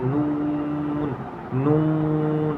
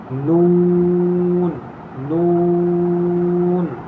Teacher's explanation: ناک میں آواز لے جا کر نہیں پڑھیں گے، منہ سے پڑھیں گے